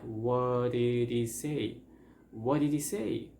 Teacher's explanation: So first we have the word what, and what happens that very often the T becomes like a D sound, that's called flap T